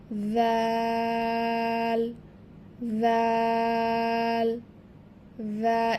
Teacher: জিহবার আগা উপরের সামনের 2 দাঁতের আগার সাথে লাগাইয়া জাল উচ্চারিত হবে, এবং এটাও কিন্তু নরম করে উচ্চারণ করতে হবে।